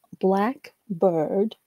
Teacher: the adjective noun Black Bird shows a clear pause between the two words